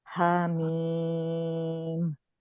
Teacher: ہا میں 2 کاؤنٹس, میم 6 کاؤنٹس